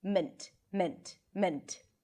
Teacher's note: An M, a schwa, which is a reduced vowel, and T.